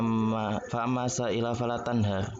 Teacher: Itu tafkhim Pak. Karena sebelum ro sukun itu berupa fathah.